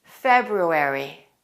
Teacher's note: You should pronounce both of those R sounds.